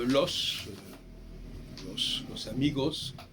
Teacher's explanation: les Espagnols prononcent systématiquement le S final, alors que les Français s'en dispensent dans bien des cas.